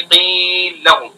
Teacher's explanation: جب پہلے کو ساکن کر دیں گے تو اس سے پہلے یا مد ہے تو مد ہو جائے گا، تو مد کرتے ہوئے دوسرے میں ادغام کریں گے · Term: ادغام کبیر